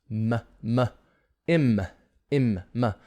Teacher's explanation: It's a nasal sound made with the lips, kind of blocking the air, and the air comes out through the nose.